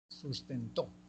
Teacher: el acento está en la última sílaba · A las agudas también se le puede denominar oxítonas. Lleva el acento en la última sílaba.